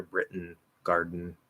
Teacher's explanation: It's going to sound a little bit different. We get a bit of a nasal plosive because of the voice